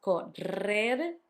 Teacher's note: You had the double R between the two vowels, correr, hard, and the soft one at the end